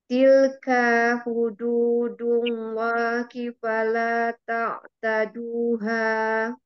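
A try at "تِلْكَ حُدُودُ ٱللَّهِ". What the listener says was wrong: Tilka hudu, bukan tilka hudu. Tuh hati-hati ya, panjang pendeknya, perhatikan. Pendek ya, tilka.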